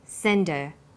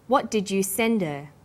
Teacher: Send is the strong form and her is weak. Because her is not stressed, we drop the initial H sound. So it's pronounced sender.